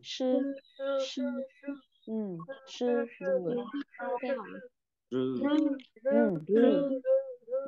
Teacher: Mình cứ nói thoải mái thôi, mình không cần phải bật hơi gì đâu. Đây không phải âm bật hơi nhá. Ừ, mình chỉ cần uốn lưỡi thôi.